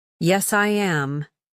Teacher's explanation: Your voice falls calmly.